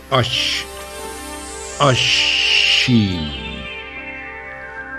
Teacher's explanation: زبان تھوڑی سی بینڈ ہوتی ہے, اور بیچ کے حصے میں سے جیم کے بازو میں سے ہی شین کا لفظ نکلتا